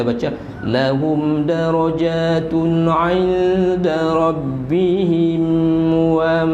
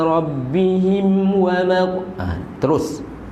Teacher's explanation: Hukum dia izhar syafawi. Jadi jangan kita dengunglah.